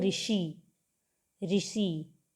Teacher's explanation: ये शी मूर्धा को स्पर्श करती है जीभ जाके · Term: मूर्धन्य सा